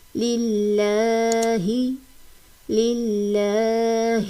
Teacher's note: جہاں پر زیر ہے تو ہم نے اس کو باریکی سے پڑھنا ہے